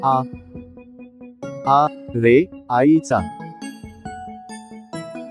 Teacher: उच्चारला जातो चला एकदा म्हणूया अ रे अननसाचा हे आहे आ उच्चारताना तोंड थोडं जास्त उघडून हा स्वर उच्चार जातो